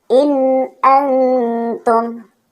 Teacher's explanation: nun sukun atau tanwin dibaca jelas tanpa dengung sedikit pun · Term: izhar halqi